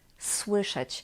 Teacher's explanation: we've got in the beginning s which is voiceless and W which is a sonorant